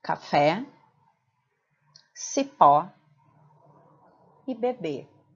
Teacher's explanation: Observem que em todas essas palavras a sílaba tônica é a última, portanto, cada palavra é classificada como oxítona.